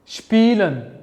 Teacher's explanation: Odatda s bilan p so'z boshida kelsa, biz uni shp kabi talaffuz qilishimiz kerak